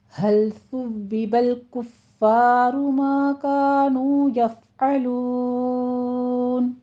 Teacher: نو میں واو مدہ ہے، 2 کاؤنٹ کیجیے، دونوں ہونٹوں کو کمپلیٹلی گول کرتے ہوئے، یفعلون میں فا پر ہمس کریں گے، اور آگے لون میں مد عارض وقفی ہو جائے گی، 6 کاؤنٹ کرنا ہے۔